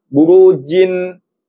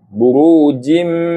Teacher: Mana sebutan nun sukun? Dia dah dimasukkan ke dalam huruf mim. Jadi burujim. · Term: idgham